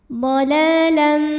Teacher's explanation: Cara bacanya panjang lamnya 2 harokat. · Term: mad tabi'i muqaddar